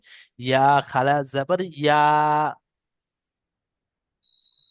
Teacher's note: ইয়া খাড়া জবর শুধু ইয়া বললে হবে না, ইয়াটাকে এক আলিফ পরিমাণ টান দিয়ে বলতে হবে।